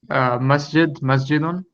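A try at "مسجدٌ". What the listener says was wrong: So make sure you're pronouncing the last vowels. It's masjidun. No, I just want you to pronounce it with all the vowels, even the last vowels, the tanween on the end. So masjidun. I just want you to say masjidun.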